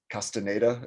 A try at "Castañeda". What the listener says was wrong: think there's like an Nye, so it's like Castañeda, but I could be wrong.